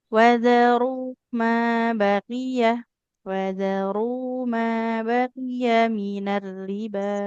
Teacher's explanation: Jadi nggak boleh dipanjangkan qafnya.